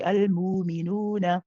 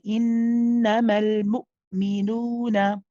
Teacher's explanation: We read it with the hamza. We have the sharpness of the hamza. We'll notice our sound suddenly stop.